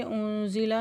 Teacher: نون ساکن کے بعد زا ہے، یہاں پہ اکفا کریں گے